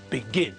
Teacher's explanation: the stress is on the last syllable